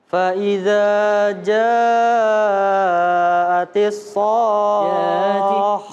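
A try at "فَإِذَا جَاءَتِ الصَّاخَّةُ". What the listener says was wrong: Ya, masih lebih panjang lagi 5 sampai 6 harokat ya. Shakhah shakhah. Ya, lebih panjang. Fa idza ja'atis shakhah. Ya, dan ada penekanannya shakhah waladdallin allin. Kalau saya nggak salah istilah tajwidnya naber. Ya, allin. Ya, jadi kayak orang ngegas motor tuh, MotoGP. Ada itunya. Dallin shakhah. Ya, naik sedikit supaya apa? Mempertegas bahwa kho-nya ini ada tasydidnya juga. Karena hukum awal daripada tasydid itu penekanan, ditekan.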